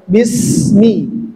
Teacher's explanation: Sin sifatnya dia merupakan hamas, tapi untuk durasinya dia masuk ke rokhawah, jadi agak lebih lama dia.